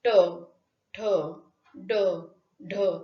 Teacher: मूर्धेला जिभेचा स्पर्श झाल्याने जे उच्चारण होतं त्याला मूर्धन्य व्यंजन म्हणतात.